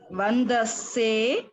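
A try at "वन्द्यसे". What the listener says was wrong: Vandase no. See, vandase no. Vandyase. Yakara doesn't go away. Vandyase.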